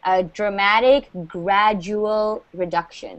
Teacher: So that word is, okay, so the D is pronounced like a G or a J, a dramatic gradual reduction. So we don't pronounce the D like a D, it's more like a J sound